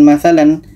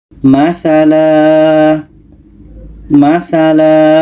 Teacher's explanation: waakaf huruf mim ini maksudnya adalah mesti berhenti harus berhenti jadi tanwin di atas berhentinya menjadi panjang Alif